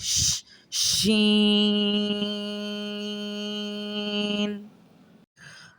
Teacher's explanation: ایک ہوا نکلتی ہے جس میں ایک سرسراہٹ ہوتی ہے، یعنی سرسراہٹ مطلب ایسے جیسے ش ش کر کے ایک آواز نکلتی ہے ہمارے منہ سے، وہیں سے شین کا مخرج ادا ہوتا ہے، جیسے ش شین۔